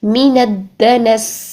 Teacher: پھر آگے دیکھیے من الدنس، من دال کے ساتھ نون کو ملائیں گے اور پھر دنس ہم یہاں پر وقف کر رہے ہیں، اس وجہ سے سین کی زیر کو نہیں پڑھ رہے ہیں بلکہ ساکن کر رہے ہیں، ٹھیک. من الدنس، سین میں سیٹی لے کر آئیں گے